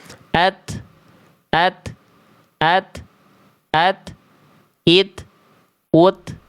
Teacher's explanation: Tapi untuk huruf ta, kadar nafas yang mengalir hanya berupa percikan saja. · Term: hams